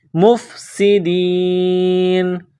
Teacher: سین میں سیٹی کی آواز پیدا کریں گے، دال کو یا کے ساتھ ملانا ہے، مفسدین، جب یہاں سٹاپ کریں گے تو نون کو سائلنٹ کریں گے، فی الارض مفسدین۔